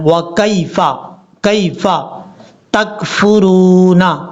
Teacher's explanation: کاف کو جب یا سے ملائیں گے تو اس کو لمبا نہیں کرنا، شارٹ کٹ پڑھنا ہے